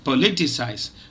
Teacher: remember it's a four syllable word and the second syllable is stressed